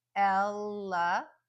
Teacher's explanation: Those last 2 syllables are just schwa.